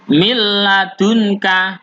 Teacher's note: Kita masuk ke lam tapi tidak dengan berdengung. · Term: idgham bila gunnah